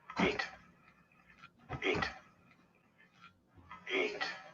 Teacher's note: Percebem que é esse I bem marcado e o T na ponta da língua, vamos dizer assim. É um T fraco. · É um T fraco. Não tem aquele som explosivo do CH.